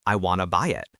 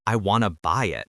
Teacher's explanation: Notice how the stress hits the word buy.